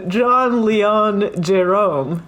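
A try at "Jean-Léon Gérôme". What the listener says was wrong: Well, if it's John, I guess it must be Jean. Jean-Léon Jérôme.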